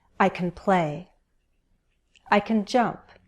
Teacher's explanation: Notice how we stress the base verb, the main verb.